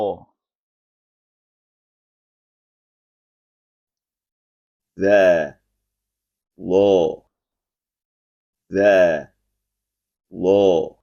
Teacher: Tempat keluar dza dan d adalah sama, yaitu bagian atas ujung lidah bertemu dengan ujung gigi seri atas dan ujung lidah keluar sedikit.